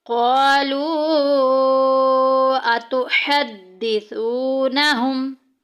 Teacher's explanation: ہے، لو میں دیکھیں واو ساکن پیچھے پیش، واو مدہ، اور حروف مدہ کے بعد آگے والے لفظ میں دیکھیں حمزہ بالکل سٹارٹ میں آ گئی، مد منفصل کا قاعدہ جاری ہو رہا ہے، 2 الف کے برابر لمبا کریں گے۔